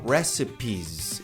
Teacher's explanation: No plural, recipes. Esse S tem som de Z.